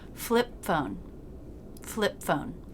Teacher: don't release that ending stop consonant, just stop the air